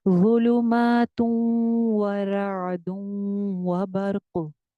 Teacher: बर्क पे रुकेंगे तो काफ पे कलकला करेंगे